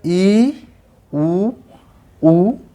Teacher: जब इनका उच्चारण कर रहे हैं तो जिह्वा का आगे वाला भाग है उस पर स्ट्रेस पड़ रहा है, मुंह बंद हो रहा है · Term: संवृत्त